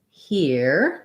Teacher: So here's our ERE that we were just talking about, it has the ear diphthong. And that AD is unstressed, so you're going to have a schwa there.